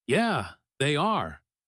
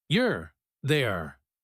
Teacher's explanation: The Y from they and the A from are blend into a you're sound. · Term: connected speech